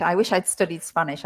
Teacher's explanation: that wish I'd really is tricky to pick up when you're listening because it's so squashed together. It's like wish I, I wish I'd, isn't it?